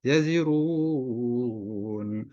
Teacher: Nah, ini mat arid lis sukun. Bisa dibaca 2 harokat, 4 harokat atau 6 harokat.